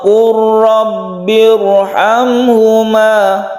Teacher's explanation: mim mati bertemu dengan ha Idhar syafawi jadi ini tidak berdengung